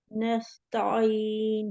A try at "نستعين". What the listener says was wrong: تا نہیں پڑھے. تا زبر ت، تا زبر ت. نہیں پڑھا سیدھا. تا نہیں، تا تا ہلکا سا ٹیڑھا. نستعین. بالکل سیدھا تا پڑھی ہے.